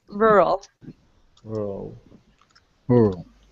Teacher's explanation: we do pronounce the second R but just barely